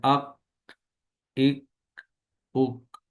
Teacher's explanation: کاف باریک اور بغیر جھٹکے والی آواز کے، ادائیگی کے وقت زبان کی جڑ کو کوے کے قریب تالو پر لگائیں گے، جیسے اک، اک، اک۔